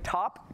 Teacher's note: top has an aspirated uh puff of air to it